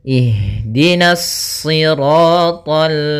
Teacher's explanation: karena kita bertemu dengan huruf lam maka dia lamnya tipis jangan ikut tebal